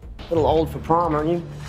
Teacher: Notice how Tom Holland's character Nathan pronounces the question tag, aren't you? Instead of reducing the U to a schwa sound, he pronounces it you. However, he cuts out the T in aren't, so we hear, aren't you?